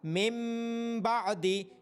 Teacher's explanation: یہاں نون ساکن کے بعد حرف با آ رہا ہے، اس وجہ سے نون ساکن کی آواز کو میم کی آواز میں بدلا جا رہا ہے